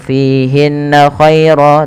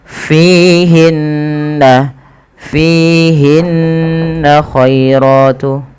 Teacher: Fihinna, fi mad tabi'i panjangkan 2 harakat pada lafal fi-nya karena ia ada kasrah bertemu dengan ya. Kemudian hinna ada gunnah pada lafal bacaan nun berharakat tasydid. Hukum gunnah merupakan tingkatan tertinggi dalam bacaan gunnah, yaitu ketika ada nun tasydid atau mim tasydid.